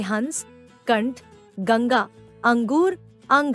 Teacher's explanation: अनुस्वार छेंस यह अपने से पूर्व वर्ण के ऊपर बिंदु के रूप में प्रयुक्त होता है, जैसे हंस, कंठ, गंगा, अंगूर, अंग आदि। इसका उच्चारण स्वर के बाद होता है तथा ध्वनि नाक से निकलती है।